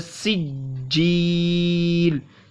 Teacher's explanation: सीन पतली आवाज़ से निकलेगी, छोटी सीन है